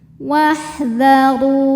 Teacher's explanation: Nah ini alifnya ini bukan pemanjang ya, ini hamzah wasal. Hamzah wasal jika di tengah tidak perlu dibaca, jadi wawunya pendek. Wahdharu. Huruf ro dibaca secara tafkhim karena ro berharokat dhammah, maka ro dibaca dengan tebal.